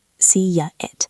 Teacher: See ends in E. You are smiling. It starts with I. To connect them, we use a Y.